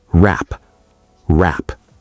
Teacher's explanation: Wrap sounds like rap. The W is completely silent, so the phrase sounds like I can't wrap my head around it.